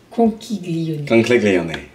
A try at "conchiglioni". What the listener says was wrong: Non, on dit pas chi. Non, mais on dit pas chi.